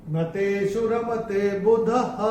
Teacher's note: तो ये जो विसर्ग आ रहा है चरण की समाप्ति पे, इसका उच्चारण केवल और केवल ह ही होगा।